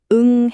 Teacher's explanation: 혀의 가장 뒤쪽 뿌리 부분이 목구멍을 꽉 막으면서 소리가 코로만 나가는 게 느껴지시죠? 이게 바로 에너지를 안으로 가두는 대표적인 닫힌 소리입니다. · 이응 받침은 저기 목구멍 가장 안쪽 후설에서 나는 가장 대표적인 닫힌 소리입니다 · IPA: ŋ